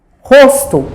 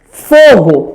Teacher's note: o O vai ter o som fechado